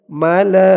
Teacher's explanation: এখানে চার আলিফ টান হবে মধ্যে মুত্তাসিল